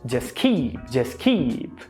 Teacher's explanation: Não é keep, é keep. Aqui você tem o S, o T e o K. Logo você vai apagar esse T